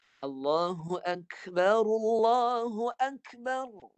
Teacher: Dia 2 getaran cukup. Untuk tikrar, getaran ra tu 2 getaran sudah madai.